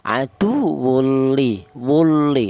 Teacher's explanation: tanwin ini cara bacanya langsung menyatu ke huruf lam. Itu namanya idgham.